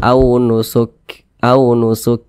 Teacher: huruf yang memiliki sifat Hamas Nah jadi ketika Kita mengucapkannya itu apabila dia sukun di huruf Kaf ini maka ada ee nafas atau udara yang mengalir